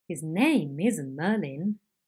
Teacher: So each accent will be slightly lower in pitch than the first accent, and there is a drop in pitch. It is marked with an arrow going down, and it would sound like this. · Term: sliding head